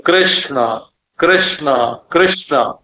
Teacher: क का क और ऋ के उच्चारण में आपके सिर में एक स्पंदन होगा माने कृष्ण बोलते समय आप नीचे से ऊपर गए और वहां शणा जो है मूर्धन्य श और ण दोनों मूर्धन्य है